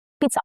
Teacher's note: Double Z in Italian is pronounced as t sound, okay? It has a little t sound, not z.